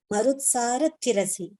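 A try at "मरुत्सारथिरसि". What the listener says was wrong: Yeah, E. The E should be chanted. I mean, it's a short letter. It should not be prolonged.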